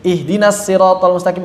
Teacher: Dari sisi riwayat Imam Hafs dia lahan jali karena ngubah huruf shad menjadi sin. Ihdinas siratal mustaqim kita baca pakai sin.